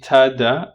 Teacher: ta, da are alveolar and they're plosive regardless of their voicing. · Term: alveolar plosives